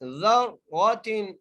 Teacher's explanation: ٹھیک ہے جی. آگے ذراتن ذال کو را سے ملانا ہے، را کو موٹا کر کے پڑھنا ہے